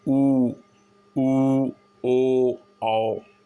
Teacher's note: अवृतमुखी, इसमें क्या है कि इसमें ओठ जो हैं वो गोल नहीं होते, आ ई ए आए, इसमें ओठ गोल नहीं होते। वृतमुखी जैसा इसका नाम है, इसमें ओठ गोल हो जाते हैं, ऊ ओ औ। इसमें ओठ गोलाकार आकृति में आ जाते हैं। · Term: वृत्त मुखी